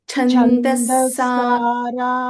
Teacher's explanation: just ದಿ first word ಛ ನ ಮಹಾಪ್ರಾಣ ಲಿಟಿಲ್ ಮೋರ್ ಸ್ಟ್ರೆಸ್